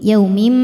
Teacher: Karena ada tanwin kasrah menghadapi huruf mim. Cara bacanya tanwin dileburkan ke mim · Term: idghamhunah